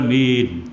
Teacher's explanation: baca mat secara panjang pada huruf alif. Dan Takhfif, baca secara takhfif, baca secara ringan huruf mim, tidak ada sabdu lah. Kita baca amin, tidak ada sabdu itu sabdu, tidak ada. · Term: Mat asli